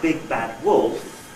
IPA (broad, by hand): ˈbig bad ˈwolf